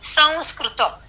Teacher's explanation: पहले आप आकार का उच्चार करेंगे और फिर आप उस अनुस्वार का उच्चार करेंगे